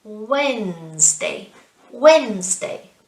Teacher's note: it's almost as if we don't pronounce the d